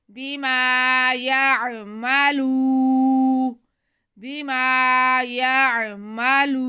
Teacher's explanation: آگے لام پہ پیش اور واو ساکن، تو یہ واو مدہ ہو گیا، لام کے آواز کو ہم ایک الف کے برابر کھینچیں گے